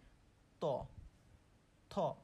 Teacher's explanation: আমরা যখন ত উচ্চারণ করি আমাদের জীভের ডগাটা কিন্তু দাঁতের সাথে লাগছে